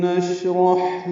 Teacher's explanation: شین میں تفشی بھی ہے، یعنی منہ میں آواز پھیلتی ہے